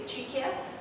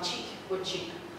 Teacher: it can lose its final vowel, and then it can also, the last consonant can become devoiced.